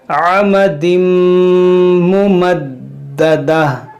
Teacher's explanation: ہم ناک میں آواز لے جائیں گے، عمدم ممددہ، دیکھیں ممددہ، دال حروف قلقلہ ہے اور مشدد ہے تو اس کو خوب جماؤ کے ساتھ پڑھیں گے